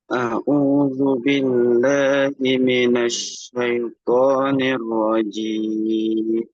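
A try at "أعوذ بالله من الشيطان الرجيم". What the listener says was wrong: Oke, kita kembalikan huruf ainnya ya. Kita kembalikan huruf ainnya. A'u, a'u, ya.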